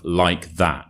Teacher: In this context, the that is stressed, and therefore it carries meaning and it keeps its original vowel sound.